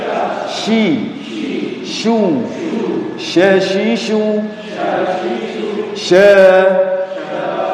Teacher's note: Tafasyi itu artinya seluruh mulut dipenuhi oleh udara, dan ini hanya dimiliki oleh 1 huruf, yaitu huruf shin.